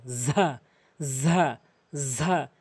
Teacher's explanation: জিব্বার আগা এবং দাঁতের আগা, দুই দাঁতের আগা, এভাবে শক্ত করে শক্তি দিয়ে ঝা ঝা ঝা। এরপরে র র, জিব্বার আগা এবং সামনে দুই দাঁতের আগা র।